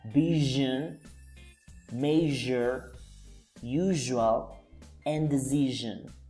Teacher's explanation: it's like zzz, like that. It vibrates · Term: zh